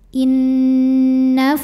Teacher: cara bacanya didengungkan jadi bunyi n tahan sampai ada suara masuk hidung kurang lebih dua harakat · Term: gunnah musyaddadah